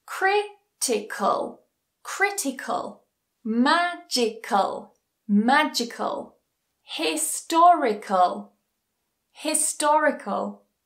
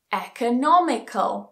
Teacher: the stress still goes on the anti-penultimate syllable